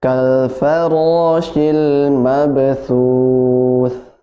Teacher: Untuk huruf tha ini dia hamas, ya, nafasnya mengalir. Jadi tidak boleh dihilangkan nafasnya. Ada nafasnya sedikit.